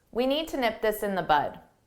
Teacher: notice that I didn't pronounce the d need